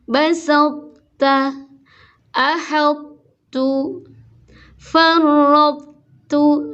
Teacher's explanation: Cara mengidghamkannya adalah dengan mengeluarkan huruf to dari makhrajnya tapi tanpa diqalqalahkan. Kemudian menurunkan pangkal lidah untuk menyebut huruf ta yang dikeluarkan dengan sifat hams. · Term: idgham naqis